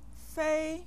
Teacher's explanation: what tone do you hear in the second syllable fa yes the first tone